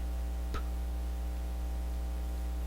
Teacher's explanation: completely and no throat vibration because the p sound is what is known as the unvoiced sound